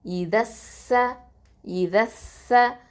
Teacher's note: அதில் உள்ள ஹம்சத்துல் வசலையும் லாமையும் நம்ம வந்து உச்சரிக்க மாட்டோம், ட்ராப் பண்ணிவிடுவோம். ஏன் அப்படின்னு பார்த்தீங்கன்னா, அது வந்து சீன் வந்து ஹுருஃபு ஷம்சியா எழுத்து.